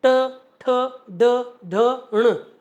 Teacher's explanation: ट वाली लाइन भी मूर्धा से बोली जाती है